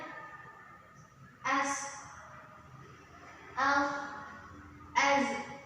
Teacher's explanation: dia seperti ada desisan, menyerupai suara desisan burung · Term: sofir